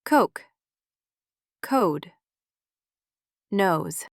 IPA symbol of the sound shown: oʊ